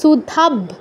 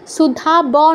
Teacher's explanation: সুধাব্ধি, এই বয়ের নিচে একটা হসন্ত আছে, হসন্তের গুরুত্ব সম্পর্কে আপনারা এত দিনে জেনে গেছেন যে হসন্ত আছে মানে পরের স্বরবর্ণটা নেই, বয়ের অটা নেই, তো অটা নেই মানে বটা অর্ধেক উচ্চারণ হবে